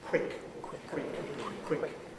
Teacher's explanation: in quick the w it's voiceless